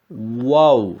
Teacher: alt ve üst dudaktır çıkış noktası dudaklar ileriye doğru uzatılır ve yuvarlak haline getirilir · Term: vav harfi